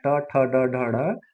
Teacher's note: होती है ठीक टेढ़ा हो कर के ये आवाज निकलता है जीभ जब टेढ़ा होती है तब ये आवाज निकलता है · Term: मुर्धन्य व्यंजन, मूर्धन्य व्यंजन